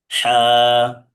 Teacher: এই হার উচ্চারণ হচ্ছে কণ্ঠনালীর মধ্যখান চেপে পড়তে হবে।